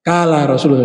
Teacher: Kalau Qaf di Irak cenderung ke Kaf